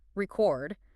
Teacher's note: If you put the stress on the first syllable, record, it's a noun.